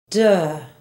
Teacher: with more of the bottom than the top front teeth shown the tip of the tongue touches the top of the mouth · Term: past tense ed sound